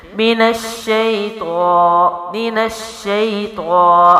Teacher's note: الف مد کے ساتھ ہے تو لمبا بھی کیا جا رہا ہے